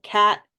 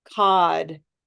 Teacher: if the consonant has a voice D then the vowel lasts more time